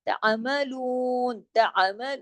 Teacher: تا کے ساتھ عین کو ملائیں گے تو جھٹکا نہیں دینا ہے، ہلانا نہیں ہے، کلکلا نہیں کرنا ہے